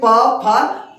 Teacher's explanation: ओठ एक दूसरे को स्पर्श करती है तभी हम लोग इसको बोल पाते हैं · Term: प वर्ग